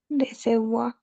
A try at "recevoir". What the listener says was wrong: Marcala más a la R, bien, en la base de la garganta.